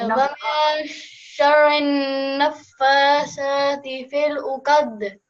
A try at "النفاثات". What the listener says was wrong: And one thing again, this sa, you pronounce it as sa. That's not the correct pronunciation of it. So again, as I told you with this zal or this zal, you have to take your tongue out and then touch it with the upper teeth and then say this word, this letter.